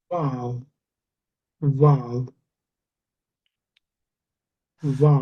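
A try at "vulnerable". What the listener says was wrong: Um, when you're saying it, it sounds to me like like this. To me, in my mind, it sounds like you're putting an A in there. Val, val. A little bit, not fully. It's that's what I'm hearing.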